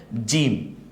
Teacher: জিব্বার মাঝখান ওই বরাবর তালুর দিকে উঠে।